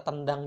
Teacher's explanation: karena apa Karena ya n&d sama-sama di alveoli atau di dental juga